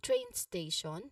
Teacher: we give clear stress to train